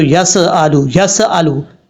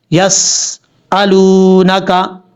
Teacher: اب یہاں پر سین میں قلقلہ اگر کریں گے تو یس آلو، یس آلو، جو کہ کئی لوگ غلطی کرتے ہیں، لیکن یہاں پہ سین میں قلقلہ ہے نہیں، آواز جم جائے